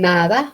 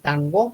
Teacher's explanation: porque su lengua está detrás de los dientes pero si dicen tango no está detrás de los dientes